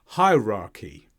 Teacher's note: The American sound is slightly different because it doesn't have the schwa sound and there's a very slight r sound after the first r.